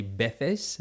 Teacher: In Spanish, Spain Spanish, they would say veces. So the V kind of becomes a B, and the C becomes a th.